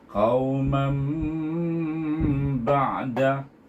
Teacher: Hendaklah kita baca dengan dengung dan nama hukum tersebut iqlab, iaitu lebih pada huruf mim bunyinya.